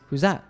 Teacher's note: also notice that drops the th in that